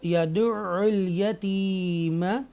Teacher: یہ یا مدہ ہے، تھوڑا سٹریچ کر کے پڑھیں گے